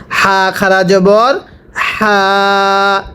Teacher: এই গোল হাটা উচ্চারণের সময় গলার মধ্যে আওয়াজ করে পড়তে হবে। হাটা উচ্চারণের সময় গলার মধ্যে বাতাস বের করে পড়তে হবে।